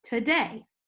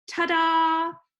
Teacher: you have a short unstressed syllable and a longer stressed syllable